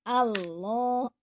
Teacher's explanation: Jadi menggunakan lidah naik ke atas, pangkal lidahnya naik karena tebal tafkhim.